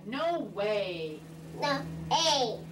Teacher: I also reward him for certain movements such as the lip rounding for the W even though he still distorts the vowel